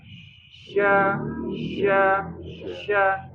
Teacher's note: sifat tafasyi menyebarnya angin mengenai gigi bagian dalam dan atas dan bawah